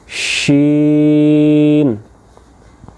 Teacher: شین زبان کا درمیانہ حصہ اور تالو کا درمیانہ حصہ، جیم اور شین دونوں کا سیم مخرج، لیکن شین میں ہم نے کیا کیا، زبان کو پھیلا لیا، تفشی کی صفت اس میں ظاہر کی، تو آواز منہ میں پھیل جائے گی